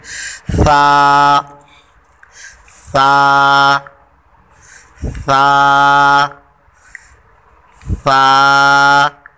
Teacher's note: सा, सा, सा, सा। ज़ुबान ऊपर लगानी, इसका सिरा जो ज़ुबान का सिरा है ये ऊपर के दांतों को लगाना है और सीटी की आवाज़ जो है ये बिल्कुल ना हो।